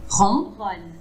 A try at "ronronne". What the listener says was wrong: Parfait, ronronne. Alors le O plus ouvert, ronronne.